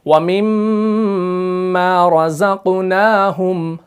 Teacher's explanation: جیسے قرآن مجید کے اندر ہے، سورہ بقرہ کے اندر آیت نمبر 3 کے اندر بسم اللہ الرحمن الرحیم وَمِمَّا رَزَقْنَاهُمْ را، یہاں پر آپ نے دھیان دینا ہے، را جو ہے یہ مفخم ہے، زا جو ہے یہ مرقق ہے